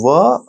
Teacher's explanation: ये दंत और ओष्ठ यानी दांत और ओठ दोनों से मिला के व का उच्चारण किया जाता है और इनका नामकरण दिया गया है दंतोष्ठ।